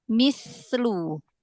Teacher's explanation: Kalau berhenti di situ 2 harokat aja ya, jangan terlalu lama. Sa-nya alirkan, hamasnya alirkan.